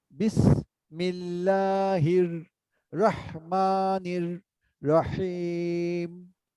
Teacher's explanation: মিম ইকারের সঙ্গে লাম তাসদিদ যুক্ত হচ্ছে, সেজন্য আমরা পাতলা করে পড়বো